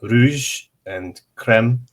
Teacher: R in Black speech is the French R. So it happens at the back of the throat